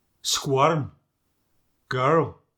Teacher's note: this intrusive ah before the R. Words like squirm and girl become squirm, girl.